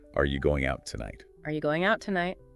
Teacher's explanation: The T in out is often silent